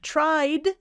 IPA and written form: traɪd (tried)